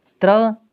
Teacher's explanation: इसका मतलब यह है कि अगर कोई संयुक्त व्यंजन है, जैसे त्र में त और र 2 व्यंजन मिले हुए हैं। त का उच्चारण स्थान है दंत और र का उच्चारण स्थान है मूर्धा, तो त्र का उच्चारण स्थान दंत मूर्धा होगा।